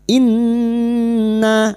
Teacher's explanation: nun yang bertasdid gunna musyaddatah kita dengungkan selama tiga harakat